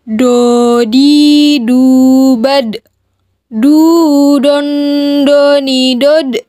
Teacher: memiliki sifat istitoah dimana suara harus memanjang